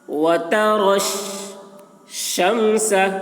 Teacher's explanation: وَتَرَى الشَّمْسَ، رو پر ہو رہی ہے، یا کو نہیں پڑھا جا رہا ہے کیونکہ یا میں کوئی حرکت نہیں ہے